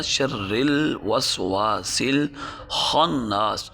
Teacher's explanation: خا موٹے حروف میں سے ہے، اور اس کا تعلق ہے کہ ہم گلے کے اس حصے سے جو منہ کے قریب ہے وہاں سے اس خا کو ادا کرتے ہیں۔